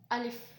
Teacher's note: ये मुंह के खाली हिस्से से अदा होता है · अगर हम इसको झटका महसूस कराएंगे तो ये अलिफ नहीं पढ़ा जाएगा, बल्कि ये हमज़ा हो जाएगा।